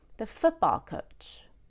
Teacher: I stress foot the most because it is the first word.